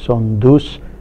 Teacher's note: For example, in Gondi, given two morphemes son and us, which means to lose, we have a d inserted within the word, and so son us is pronounced as son dus. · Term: excrescence